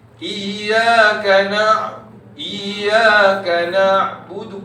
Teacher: Tetapi yang saya nak mentionkan, suara pada ya sabdu tu biarkan mengalir. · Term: rohawa